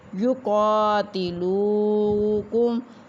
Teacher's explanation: کاف موٹا ہے اور کاف کے اوپر کھڑی زبر ایک الف کے برابر لمبا کریں گے